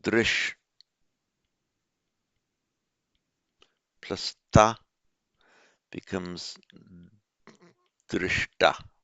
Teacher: Now, spashtam just means seen, so we have spash plus ta, past participle, and it standard feature of internal sandhi, wherever you get a sh plus a t, that becomes shta